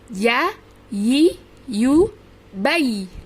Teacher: itu lidahnya terasa sekali diangkat tengahnya, ditempelkan ke langit-langit bagian atas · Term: huruf ya